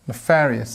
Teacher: pronunciation-wise, we stress on the second syllable